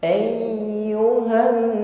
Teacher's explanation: harus sampai keluar bunyi gunnah atau bunyi dengung di al khaysyum, rongga hidung